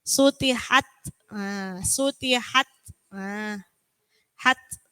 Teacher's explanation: Jadi memang harus ada hams. Hams itu hembusan sedikit ga seperti huruf ga.